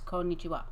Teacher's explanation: Japanese has no emphasis on any syllable more than any other syllable